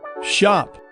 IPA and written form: ʃɑp (shop)